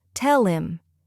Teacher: Now let's work on reducing the h sound in casual speech. Americans sometimes drop the h in words like him, her, he, have, especially after a consonant.